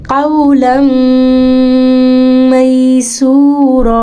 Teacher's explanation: लम हमने मिलाया, मदगम किया और साथ गुन्ना भी कर दिया